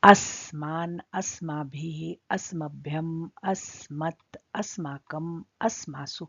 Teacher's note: जहां कहीं भी अस्मद सर्वनाम शब्द रूप है, जहां पर स का प्रयोग हुआ है, वो हर स्थान पर दंत्य स है। दंत्य स माने जिसको आप लोग सरोते वाला स कहते हैं, ये स।